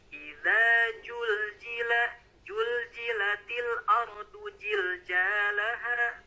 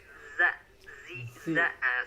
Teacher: huruf Z ada desisan atau untuk kaidah tajwidnya ada sofir ya, ada suara desis